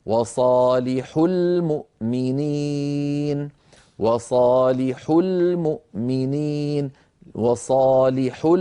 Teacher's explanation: نضغط هذه الضغطه البسيطه التي تنبه السامع على ان هنا واو جماعه محذوفه